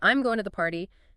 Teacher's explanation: your voice will go down on party